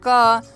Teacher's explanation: तो क के बाद हमें अ की ध्वनि सुनाई पड़ती है